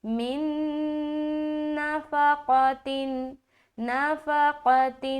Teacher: نون ساکین ہے، اس کے بعد پھر دوسری نون ہے۔ یہاں پر ادغام ناقص کا قاعدہ بن رہا ہے، غنّے کے ساتھ ادغام کریں گے۔